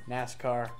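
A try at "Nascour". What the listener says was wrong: You think our, O-U-R, is R?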